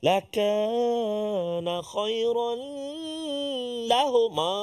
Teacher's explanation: Masukkan bunyi tanwin itu ke dalam lam tu tanpa dengung, tak boleh dengung. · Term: idgham bila gunnah